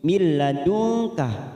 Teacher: nun sukun bertemu lam idgham bila guna hanya masuk tanpa mendengung